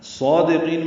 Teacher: صادقین میں صاد پر پڑھیں گے، 2 حرکات لمبا کریں گے، دال باریک ادا کریں گے